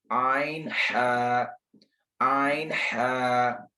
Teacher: मखरज number 3 वस्ते हलक, दरमियान वाला हिस्सा, हलक का दरमियान वाला हिस्सा